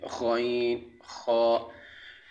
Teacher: غین اور خا یہ چوتھا مخرج ہے جو کہ حلق کے شروع حصے سے دونوں ادا ہوتے ہیں